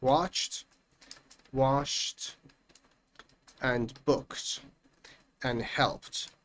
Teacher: In all of these words, the ed is pronounced with a t sound.